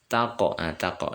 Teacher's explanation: ini juga huruf bacaan Qalqalah ya mantul ya Qalqalah sugro